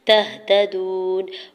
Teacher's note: تہتدون، تا کے زبر کو ہا ساکن کے ساتھ ملاتے ہوئے پڑھیں گے، تا کے زبر کو بغیر کھینچی ہوئے ادا کرنا ہے۔ تہتدون، واو ساکن سے پہلے دال کے اوپر پیش واو مدہ ہو رہا ہے دو حرکت کھینچ کے ادا کریں گے، نون کے اوپر زبر ہے، آگے آیت کا وقف ہے، وقف کرنے کی صورت میں نون کو ساکن کر دیں گے۔